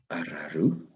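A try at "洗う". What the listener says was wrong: not araru. That would be a group 2 with a ru on the end. Just arau.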